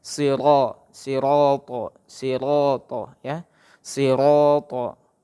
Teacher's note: Walaupun sodanya itu berbaris kasroh, ya, dia wajib tebal walaupun berbaris kasroh.